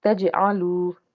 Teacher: جیم ساکن جو ہے یہ حرف قلقلہ میں سے ہے، اس لیے جب ادا کریں گے آواز لوٹ کے آئے گی۔ تجعلو، واو ساکن سے پیچھے پیش ہے اس لیے اس کو ہم نے ایک الف کے برابر کھینچنا ہے۔